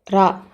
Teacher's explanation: அது எப்படின்னா நாக்கோட நுனி அன்னத்தோட நுனியை தொடுறப்ப உருவாகும். ரா இந்த ஒலியை நம்ம சொல்கிறப்ப மென்மையாகவும் சின்ன அதிர்வும் வருடலும் இருக்கும். அதனால தான் இதை சின்ன ரான்னு சொல்லலாம்.